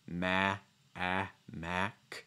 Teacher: a sound where you open your mouth wide you can feel the corners of your lips pulling a little bit it's very tense